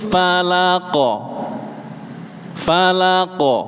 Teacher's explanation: Kalau qof qo qi qu dia ketika disukunkan dia ada suara pantulannya qalqalah. Qul auzubirabbil falaqo falaqo.